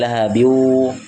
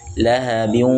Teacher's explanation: Memasukkan huruf dengan dengung. Harus disertai dengan suara dari di hidung. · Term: gunnah